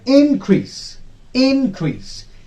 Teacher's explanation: There are two syllables, in and crease. In will be stressed. Increase when it is used as a noun.